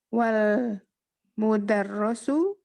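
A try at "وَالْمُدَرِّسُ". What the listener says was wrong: Kasroh. Wal mudarrisu.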